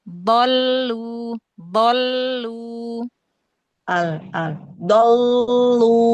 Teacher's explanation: Al jangan nempel di gigi. Jangan di belakang gigi. Mundurin lagi coba.